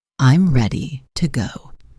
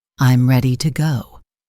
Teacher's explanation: content words get stress. I'm ready to go. And the sentence falls slightly.